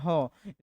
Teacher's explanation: ह हम लोग कंठ से उच्चारण करते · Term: ऊष्म व्यंजन वर्ण